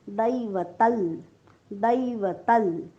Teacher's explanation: अनुस्वाराच्या पुढे जेव्हा ल येतो तेव्हा अनुस्वाराचा उच्चार आपण हलंत ल करतो. दैवतल, दैवतल.